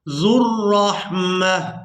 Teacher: यहाँ पर जो आप लोग वाव देख रहे हैं ये वाव साइलेंट ही रहेगी, इसको अदा नहीं करेंगे। जाल को रा मुशद्दद के साथ मिलाएंगे। जाल रा पेश ज़ुर्रहमा, यहाँ पर भी वक़फ़ करेंगे तो वक़फ़ की सूरत में एक आंख वाली ता को हा में बदल देंगे और इसको साकिन अदा करेंगे। · वक़फ़ की सूरत में एक आंख वाली ता को हा में बदल देंगे और इसको साकिन अदा करेंगे। मीम को हा साकिन के साथ मिलाएंगे।